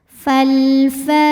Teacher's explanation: Fal ada hukum tajwid namanya alif lam qamariyah karena alif lam menghadapi huruf qamariyah yaitu fa. Maka lam sukun dibaca secara jelas atau dinamakan dengan izhar qamari. Alifnya atau hamzah wasalnya nempel dengan huruf fa ya.